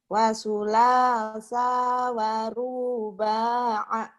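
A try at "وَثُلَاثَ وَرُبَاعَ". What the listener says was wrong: Bukan. Wasulasa waruba'a. Pendek sanya. Wasulasa waruba'a. Lagi.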